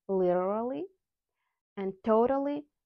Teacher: o as in go and flap T totally